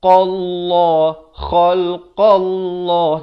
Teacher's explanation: huruf qaf ini makhrajnya di pangkal lidah ini, di pangkal lidah.